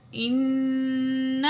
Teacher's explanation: تو یہاں حمزہ زیر نون، ان، نون زبرنا، نون تشدید میں ہمیشہ غنہ ہوگا، ہا الٹا پیش ہو، انہ، الٹا پیش کو دو الف کے برابر کھینچ کے پڑھیں گے، کانا، یہاں الف مد ہے، دو الف کے برابر کھینچ کے پڑھیں گے، توابا.